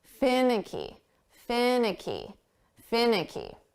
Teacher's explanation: we're going to put the syllable stress on the first sound fin